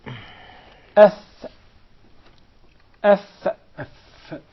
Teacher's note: The fa is articulated from between the inside of the lower lip and the tip or the edges of the 2 top front incisors.